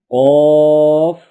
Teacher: زبان کی جڑ اور تالو کے نرم حصے سے ادا ہوتا ہے۔